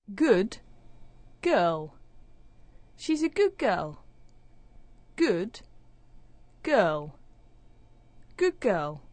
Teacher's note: The sound at the end of the first word is becoming like the sound at the beginning of the second word. So the d sound at the end of good is becoming like the g sound at the start of girl. It doesn't actually disappear, it actually sounds like a g. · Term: assimilation